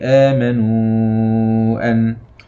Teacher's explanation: بداية الكلمة فيها همز وبعده مد في نفس الكلمة، ده اسمه مد بدل، يعامل معاملة المد الطبيعي